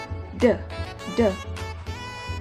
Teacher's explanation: Konsonan ini disimbolkan dengan huruf D dan merupakan alveolar, plosive, dan voice sound.